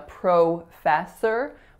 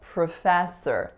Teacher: the P R o is really PR schwa proof at and then s o R is sir so it's